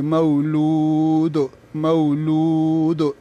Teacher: نو دال چې ده دا مونږ د وقف د وجې نه ساکن کو نو په دې کې قلقله وکړي